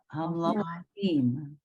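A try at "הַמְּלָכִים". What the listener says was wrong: Okay, the only thing you got wrong was the vowel under the lamed.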